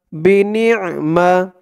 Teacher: আইনের উচ্চারণটা গলার ভিতর থেকে শক্ত হয়ে আসবে